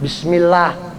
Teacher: maka lafadz Allah atau lafadz jalalah nya bunyinya tipis tarqiq